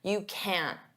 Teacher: Native speakers often pronounce t as a flap t, which means we don't push out that puff of air